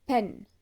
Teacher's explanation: it's a voiceless sound which simply means the vocal cords don't vibrate when it's being produced